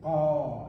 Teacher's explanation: to say gaw, you need to put your tongue back kind of your throat